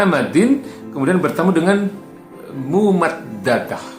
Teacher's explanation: nah nunnya tidak terdengar, langsung dimasukkan ke mimnya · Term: idgham bigunah